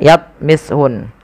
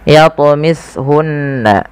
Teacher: ada bacaan qalqalah, wajib kita pantulkan lafal huruf ta. Jangan dibaca yatmishun, tapi harus memantul.